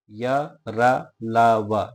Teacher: और इनके इनकी जो विशेषता होती है यह होती है कि ये कहीं भी पूर्ण रूप से मुख के अंदर स्पर्श नहीं करते हैं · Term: अंतस्थ